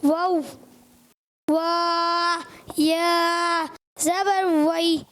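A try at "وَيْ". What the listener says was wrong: وا نہیں، واو پورا پڑھنا ہے. واو یا زبر وئی. واو جلدی نہیں، جھٹکا نہیں آئے، نرمی سے. واو وئی. واو وئی.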